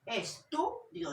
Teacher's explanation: Entonces tenemos átona, tónica y átona.